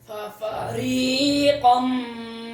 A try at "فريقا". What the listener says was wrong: ये कम नहीं है, क़न, फरीक़न, क़ौफ मोटा पढ़ो। अब मीम कहाँ से ले आए? कम मीम किधर है?